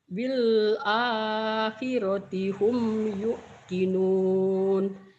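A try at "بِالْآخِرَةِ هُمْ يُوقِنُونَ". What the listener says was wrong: Yuknya jangan ditekan karena tak ada hamzahnya. Yuknya jangan ditekan.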